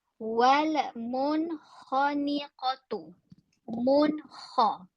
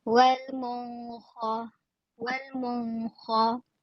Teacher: Jelas kedengaran bunyi nun itu dan jelas juga bunyi huruf izhar itu iaitu kha.